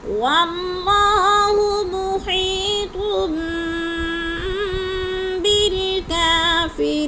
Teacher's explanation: واللہ کی اللہ کو پر کر کے پڑھیں گے، اس لیے کہ اللہ سے پہلے لفظ واو پہ زبر ہے